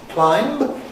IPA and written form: klaɪmb (climb)